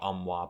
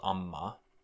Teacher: if the W is being dropped out, then the space that the W used to fill will be filled instead by an echo of the preceding consonant. So amwa becomes amma.